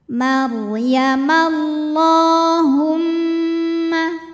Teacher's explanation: Huruf ra sukun dibaca secara tafkhim karena harokat huruf sebelumnya fathah, maka ra tebal.